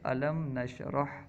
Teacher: میم ساکن کو اس کے مخرج سے ظاہر کر کے پڑھنا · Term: اظہار شفوی